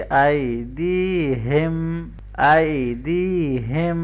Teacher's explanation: हा को गले के नीचे से हैवी करके पढ़ेंगे